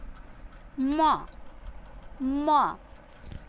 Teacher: हम मुख से तो उसको बोल ही रहे हैं, लेकिन हम उच्चारण नासिका से भी हो रहा है। आदि वर्ण अनुनासिक है।